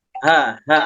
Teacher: ha di sini sebetulnya termasuk huruf tipis namun suaranya memang besar ha ha ada ngebas gitu suaranya tapi tidak merubah vokalnya contoh